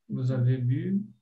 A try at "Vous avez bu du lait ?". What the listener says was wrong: Só que aí é uma pergunta, não é? Cadê a entonação de pergunta?